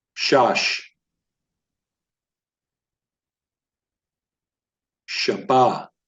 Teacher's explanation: notice I'm enunciating these words predominantly on the last syllable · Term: stressed in the last syllable